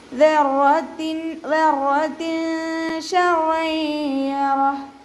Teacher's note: നൂനിൻ്റെ സൗണ്ടിനെ മറച്ചു വെച്ചിട്ട് മനിച്ചു പോകുക കേട്ടോ. നമ്മുടെ നാവ് മുകളിൽ തട്ടാത്ത രൂപത്തിൽ. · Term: ഇഖ്ഫാ